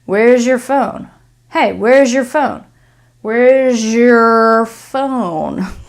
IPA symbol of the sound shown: ʒ